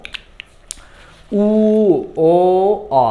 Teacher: মুখটা আস্তে আস্তে বড় হচ্ছে, দেখো অবস্থা ছোট ছিল, আস্তে আস্তে বড় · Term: গোলাকৃত